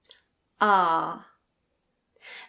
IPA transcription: ɑː